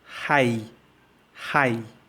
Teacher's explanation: in this word high the AA sound is longer